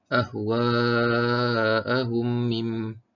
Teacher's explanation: Cara bacaannya dibaca panjang dengung 2 harakat. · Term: idgham mislain